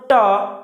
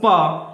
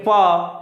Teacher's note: तो पीछे अ की ध्वनि सुनाई दे रही है